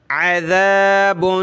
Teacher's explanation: ذال پہ زبان نکالیں تھوڑی سی، اس کو نرمی سے پڑھتے ہیں ، اس کی جگہ آپ نے عزا، زا نہیں کہنا، زا